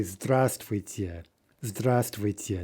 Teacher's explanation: we're just dropping a consonant from the pronunciation because it's involved in some kind of a cluster that's difficult to pronounce. Okay, so instead of zdravствуйте, right, we say здравствуйте, здравствуйте, no v.